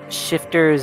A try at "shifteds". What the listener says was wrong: Shifteds, not ters.